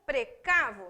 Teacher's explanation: A tonicidade recairia no radical do verbo.